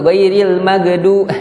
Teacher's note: Sebagian orang membaca huruf ghain itu mantul. Ghairil maghdu ghain tidak boleh mantul. Maghdubi. Dan huruf kata maghdu itu huruf dod itu tebal.